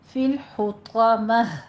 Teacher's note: ہا کو وسط حلق سے ادا کریں گے اور طا کو پور پڑھیں گے